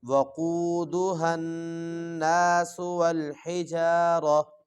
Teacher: وقو پڑھنا ہے، وقو نہیں پڑھنا، واؤ کے اوپر پیش نہیں پڑھنی، زبر پڑھنی ہے